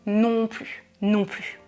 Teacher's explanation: Je ne prononce pas le S dans non plus. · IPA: [ply]